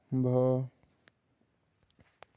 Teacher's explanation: हिंदी की स्पर्श घोष महाप्राण ओष्ठ व्यंजन ध्वनि है